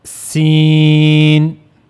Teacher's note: So for pronouncing seen, you have to use the tip of the tongue near the inner plates of the upper central incisors